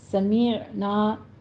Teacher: آئین کی آواز وسط حلق میں لے جا کے سٹاپ کرنی ہے، قلقلہ نہیں کرنا اس کے اوپر